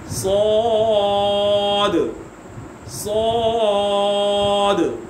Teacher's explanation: اس میں سیٹی آئے گی لیکن پر یعنی موٹی، کیونکہ حروف مصالیہ میں سے ہے، اور آخر میں کلکلہ ہوگا کیونکہ آخر میں دال آ رہا ہے۔